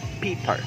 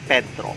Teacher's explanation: Now let's proceed to the next letter in the abecedario, and that is the letter P. It basically has the same sound as that of English, except that it doesn't have any puff of an air. Like in English, for example, Peter. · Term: without the puff of an air